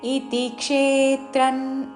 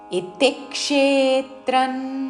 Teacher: జ్ఞేయైన్ చోక్తం సమాసతః మద్భక్త ఏతద్విజ్ఞాయ [సంగీతం] మద్భావాయోపద్యతే ఇతిక్షేత్రన్ తథాజ్ఞానై ఇతిక్షేత్రన్ అనకూడదు తి మీద ఆఘాత క్షే మీద ఆఘాత పలుకుతూ ఇత్తిక్షేత్రన్ అనుస్వారము న్ ఉచ్చారణ ఇత్తిక్షేత్రన్ తథా ముందు అల్పప్రాణత తర్వాత మహాప్రాణత